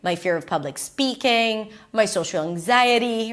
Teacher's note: Anxiety is doesn't sound exactly like speaking. And for both, she goes up in pitch.